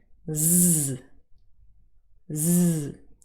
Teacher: you can feel the vibration very clearly in your throat from the vocal chords so that is the voiced fricative z